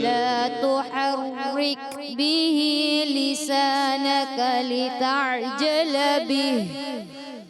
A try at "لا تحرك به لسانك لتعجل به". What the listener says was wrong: تحرک را کو باریک رکھنا ہے.